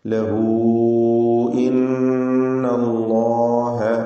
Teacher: മദ് മുൻഫസിലിൻ്റെ വിധിയാണ്. നാലോ അഞ്ചോ ഹറക്കത്തിൻ്റെ അളവിൽ ദീർഘിപ്പിക്കൽ അനുവദനീയം.